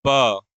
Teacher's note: यह आपके होस्ट से होते हैं। प भी आपका होठ से हो रहा है। इसका उच्चारण म का भी उच्चारण जो है होठ से हो रहा है।